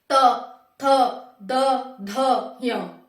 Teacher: कंठ और तालु दोनों से इसकी आवाज आएगी त की, त, यानी कि अंदर से भी आवाज निकलेगी और जीभ भी उठेगी, त, थ, द, ध, य, त, थ, द, ध, य। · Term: कंठ तालव्य